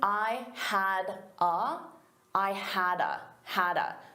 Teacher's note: So I combine had a together as one word.